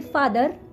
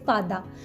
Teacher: In India, we don't pronounce last R. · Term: last R is silent